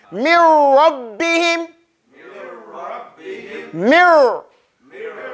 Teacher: the noon is totally eaten it's totally made what is so the noon has completely entered into the raw